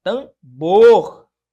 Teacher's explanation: Tambor não, né? A sílaba tônica aqui é no bor